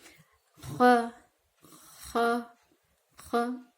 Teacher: خا کے لیے ہمیں حلق کا استعمال کرنا پڑے گا، حلق زبان، ٹھیک ہے، خا خا خا، ٹھیک۔